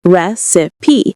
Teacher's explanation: Recipe, on the other hand, has 3 syllables. Recipe. We stress the first one, and the second is a schwa sound.